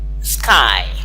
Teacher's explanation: That's a second diphthong. So again, it is like you are doing some addition of the long R and the short E, which makes I. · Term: diphthong I